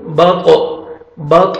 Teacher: جب بھی یہ ساکن آئیں گے تو ڈبل ساؤنڈ آئے گا، تو یہ طا حروف قلقلہ میں سے ہے، تو یہاں پہ قلقلہ کریں گے، بط بط، طا کو موٹا بھی پڑھنا ہے اور ڈبل ساؤنڈ آئے گا